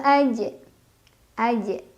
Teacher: cara bacanya dipantulkan dan pantulannya kecil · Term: Qalqalah Sugra